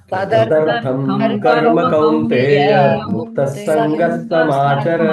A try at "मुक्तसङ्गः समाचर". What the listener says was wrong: Muktasanga samachara, not muktasangas, that is wrong. So as muktasangas samachara, not muktasangas.